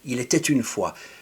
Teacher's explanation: I'm doing the T at the end of il était une fois. I'm doing that because the following word starts with a vowel. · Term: stylistic liaisons